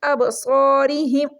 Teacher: را کو یہاں پر ہم باریک پڑھیں گے کیونکہ اس کے نیچے زیر آ گئی ہے